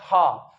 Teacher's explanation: जिसमें स्वर यंत्र द्वार पर घिसाई होती है वायु की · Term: उष्मीय व्यंजन